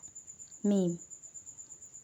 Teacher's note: میم کا مخرج ہوگا کہ دونوں ہونٹوں کے خشک حصہ سے ادا ہوگا